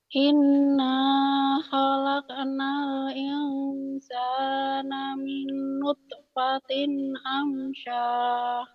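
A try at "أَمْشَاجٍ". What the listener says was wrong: Amsyaj bukan amsah. Itu jim. Amsyaj bukan amsah. Bukan ha, ini jim. Kan ada titiknya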